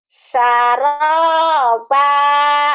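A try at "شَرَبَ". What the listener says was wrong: shinnya mana? Syaraba.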